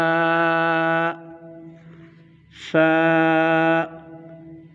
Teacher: اوپر کے دانتوں کے کنارے اور نچلے ہونٹ کے تر حصے سے یہ فا ادا ہوگا۔ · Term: حروف شفویہ